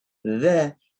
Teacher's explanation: ada huruf dzal, makhrajnya dari ujung lidah sama ujung gigi seri atas. Dza, jangan baca allazina.